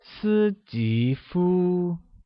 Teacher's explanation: 斯吉夫 is said with a high level tone on the first I, a rising tone on the second I, and the high level tone on U.